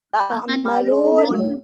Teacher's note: Tidak didengungkan. Tidak didengungkan. Izhar mutlak.